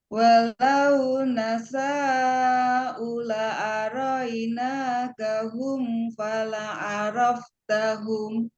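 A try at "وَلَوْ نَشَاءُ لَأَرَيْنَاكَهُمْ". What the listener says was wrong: Nah, sepertinya sya-nya kurang panjang, Bu. Coba agak panjang sedikit. Walau nasya'u la'a.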